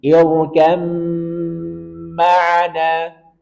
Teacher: ba ketemu dengan mim Maka langsung masukkan ke mim